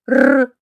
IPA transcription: р